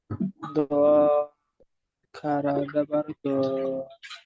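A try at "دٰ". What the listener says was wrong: আর একটু বেশি করে টান দিয়ে বলেন।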